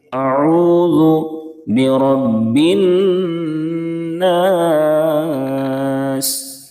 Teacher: را کے اوپر زبر ہے اس لیے را کو پر پڑھیں گے، موٹا کر کے پڑھیں گے۔ با کے اوپر تشدید ہے، با میں تھوڑی سی سختی کریں گے۔